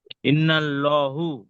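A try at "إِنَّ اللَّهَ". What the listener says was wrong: হু রয়েছে না হা রয়েছে? ইন্নাল্লাহ, এখানে আল্লাহ শব্দের ইজরাটা করেন। আল্লাহর লামকে হু নেই হা রয়েছে।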